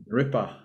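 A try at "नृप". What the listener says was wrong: A little puff was coming out.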